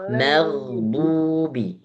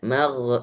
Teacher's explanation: magdubi enggak boleh diseret mag apalagi terjadi qalqalah